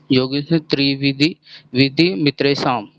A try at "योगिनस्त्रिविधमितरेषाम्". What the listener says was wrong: विधि नहीं, त्रिविध। विध।